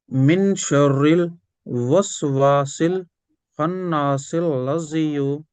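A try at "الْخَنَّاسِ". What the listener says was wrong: खन्नास, मिलाइए मिलाइए मत, मिला सकते, लेकिन अब मिलाइए मत। मैं, ये जैसे ब्लू कलर है ना, ब्लू ब्लू कलर में हमें नाक में आवाज ले जानी है डायरेक्ट।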